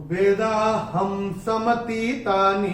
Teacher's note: पहले चरण में ह के ऊपर अनुस्वार के बाद का अक्षर है स, और अनुस्वार के बाद जब स आएगा तो अनुस्वार का उच्चारण होगा म।